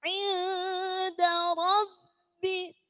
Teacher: Roknya tafhim karena diikuti fathah.